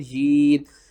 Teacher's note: ایک یا کو سختی کے ساتھ پڑھیں گے، دوسرے یا کو کھینچ کر پڑھیں گے ایک الف کے برابر